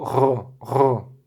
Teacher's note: Sem o daguesh, o gimel representava um som que é um tanto difícil nós reproduzirmos. É um som parecido com o som que nós emitimos quando fazemos gargarejo